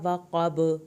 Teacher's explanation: وقب قاف کو پر کریں، با پہ کلکلا ہوگا